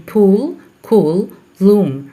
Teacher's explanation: lips are rounded in the articulation of p, k, and l in pool, cool, loom, due to the occurrence of rounded vowel u immediately after these consonant segments.